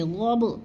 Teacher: والعادیات ضبحا، غب با ساکن ہے، حروف قلقلہ میں سے ہے، تھوڑا سا ہم نے اس کو ہلا کے پڑھنا ہے